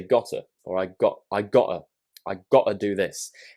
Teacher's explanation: that's using the glottal T sound